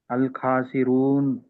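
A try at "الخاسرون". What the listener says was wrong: ఖా ఖా కా ఖా ఖా కాదు, ఖా రావాలి.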